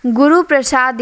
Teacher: प्रभावित लघु व्यंजन गुरु हो जाता है जैसे गुरु प्रसाद यहां गुरु में रू पर जोर देने पर लघु होते हुए भी दीर्घ होगा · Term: बलाघात